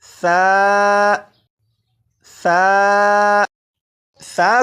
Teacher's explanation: ثا، ثا، ثا کو میں نے نرمی سے پڑھا یعنی سیٹی کی آواز کے بغیر پڑھا